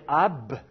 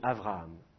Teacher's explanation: je vais rapprocher mes lèvres, mais pas jusqu'à les fermer complètement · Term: prononciation fricative